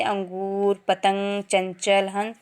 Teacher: इसका उच्चारण करते समय श्वास केवल नाक से निकलता है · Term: अनुस्वर